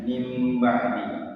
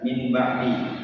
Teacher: Akan tetapi cara membacanya itu nun matinya diganti dengan huruf mim. Jadinya mim ba'di. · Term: iklab